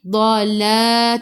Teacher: Tepi lidah menyentuh gigi geraham atas. La 2 harakat ada alif kecil mad asli.